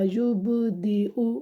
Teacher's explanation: پیش کی آواز کو دونوں ہونٹوں کو گول کر کے ادا کیا جاتا ہے تو آپ نے اس کو پڑھنا ہے حمزہ پیش او نہیں پڑھنا، غلط ہو جائے گا، اس طرح یبدیو، آگے وقف، یبدی۔